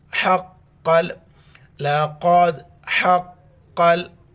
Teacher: حا کو گلے سے کریں گے اور قاف کے ساتھ ملائیں گے